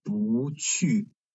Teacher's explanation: because this 不 is followed by another fourth tone syllable, so its tone changing to second tone